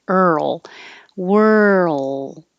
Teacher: you make the tongue move from the r to the l while you use voicing and it makes that earl whirl you don't have to release